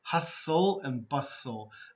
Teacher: The T in both words is quiet.